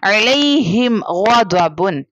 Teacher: یہاں پر میم ساکنہ کے بعد نہ با لیٹر نہ میم لیٹر، اس کے علاوہ کوئی بھی لیٹر، جیسے یہاں پر غین ہے، so we have to do اظہار شفوی، it means we don't have to do غنہ.